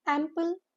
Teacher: The stress is on the first syllable. The pronunciation says it is a M with a stress and pul.